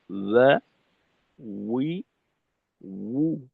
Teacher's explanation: ওয়াও হলো দুই ঠোঁট গোল করে মাঝে সামান্য ফাঁক রেখে ওয়া উচ্চারিত হয়